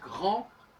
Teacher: Parce que grand, par exemple, ça s'écrit grand, G-R-A-N-D, on le sait, mais ça se prononce grand comme si le D n'existait pas